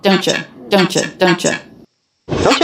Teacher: He does reduce the vowel to the schwa